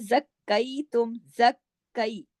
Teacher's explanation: کاف 2 مرتبہ پڑھنے میں آیا، سختی سے جڑ کے، پہلے زک اور پھر کئی